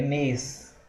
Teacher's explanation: Mês, a gente lê como se tivesse um I, mas não tem o I